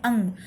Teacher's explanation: अंग चूँकि नाक से आपको आवाज़ आ रही है, कहीं ना कहीं आपकी नाक बजती है, नाक से ध्वनि आती है अंग, तो अंग नासिक्य वर्ण है। अगर हम कहें तो यह नाक की ध्वनि देता है और यह नासिक्य वर्ण है, नाक से बोलता है